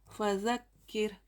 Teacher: रॉय साकिना से पहले ज़ेर है इसलिए रॉ को बारीक पढ़ेंगे।